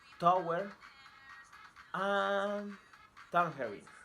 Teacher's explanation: T. Place of articulation, alveolar. Manner of articulation, stop or plosive. Voicing, voiceless. Examples: tower, and tangerine.